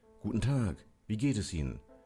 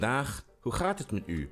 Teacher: You see, the G in Dutch is pronounced ch, and Dutch has lots of chs.